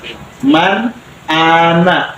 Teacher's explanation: tidak boleh mang, tidak boleh meng, nggak boleh dengung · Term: izhar